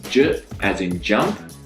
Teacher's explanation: It's a short sound made by pressing your tongue to the ridge behind your front teeth. The difference is, for j, you need to use your vocal cords. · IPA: /dʒ/